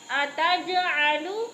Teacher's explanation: اتج پہ قلقلہ ہو رہا ہے، جیم کو ہلا کے پڑھنا ہے